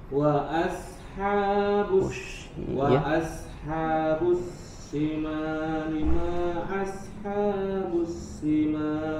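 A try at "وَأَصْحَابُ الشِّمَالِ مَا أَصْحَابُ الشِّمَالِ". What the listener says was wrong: Nah, huruf syinnya, tafasinya hilang.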